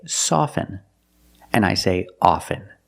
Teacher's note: With both words, I don't pronounce the T.